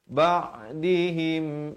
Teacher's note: Dan dibacakan, ditukar bunyi nun kepada bunyi mim. Mim, dua harakat. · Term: hukum iqlab